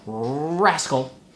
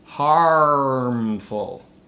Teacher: I'm talking about the front R, as in the word rascal, and the back R, as in the word harmful